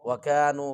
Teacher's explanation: کاف جو ہے اس کو موٹا نہیں کرنا، باریک پڑھنا ہے